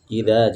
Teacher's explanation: termasuk huruf-huruf yang keluar dari lidah ya, ujung lidah bertemu dengan ujungnya gigi seri atas. Ya, jangan dibaca ida pakai dal, jangan juga dibaca iza.